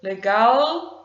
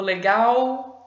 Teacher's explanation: um l mais aberto ou um l mais fechado com som de u